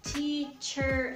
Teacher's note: So again, if you're trying to sound like an American person, you would say teacher. So basically you go from ch to r directly. So you don't say air.